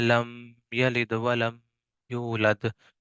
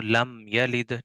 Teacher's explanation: अब आगे आ गया कि मीम साकिन के बाद बा और मीम के अलावा कोई दूसरा हरफ आ जाए, तो वहां इजहार बिला गुन्ना होगा, यानी जाहिर करके बगैर गुन्ना के पढ़ेंगे